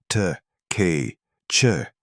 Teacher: Ejective consonants produced by closing the glottis and releasing compressed air, t, k, ch, existed nowhere in Japanese phonology.